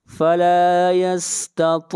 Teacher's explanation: طا کو موٹا پڑھیں گے، طا حروف مستعلیہ میں سے ہے، اور یہاں پر مد عارض وقفی ہوگی، اور اس مد کی مقدار 3 الف ہے۔